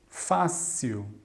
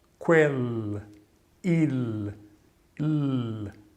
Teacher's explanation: Então é um som quel, il, l. Não tem som de U, como é normalmente pronunciado o L no final de uma palavra na língua portuguesa.